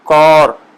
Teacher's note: الف کا تلفظ جو ہے نا اردو کا آ، المدہ آ نہیں ہے، بلکہ الف اور واو کے درمیان جو آواز ہے اس کا ہے